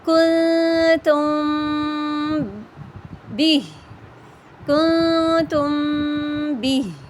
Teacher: میم کی آواز کو چھپائیں گے اور با کے مخرج پہ جائیں گے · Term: اخفاء شفوی